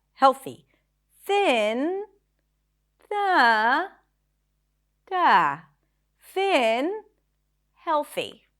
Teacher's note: there is a lift in pitch when we say thin